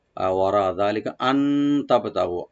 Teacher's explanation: আন এখানে ইখফা করব আমরা, নুন সাকিন। তবে তাটাকে ওপেন করে বাতে একটু হালকা কলকলা করব।